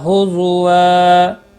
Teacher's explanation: تنوین کو بدل کر ایک زبر کے ساتھ پڑھیں گے، الف مدہ بنتا ہے، ایک الف کے برابر کھینچ کر وقف کریں گے